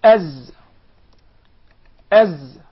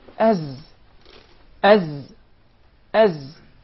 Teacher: your tongue never comes out of your mouth as as and there is actually a whistling sound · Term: zai